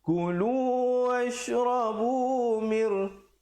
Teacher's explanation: ku jangan dipanjangkan. Bunyi ku terus masuk lu.